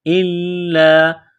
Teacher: حمزہ کو لام کے ساتھ ملانا ہے، لام میں سختی کرنی ہے۔ إِلَّا، لام کو دبانا ہے۔